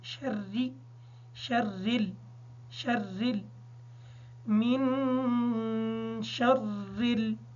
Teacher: نون ساکن ہونے کی وجہ سے اس پر غنہ ہوگا، را کے نیچے زیر ہے، را کو باریک پڑھیں گے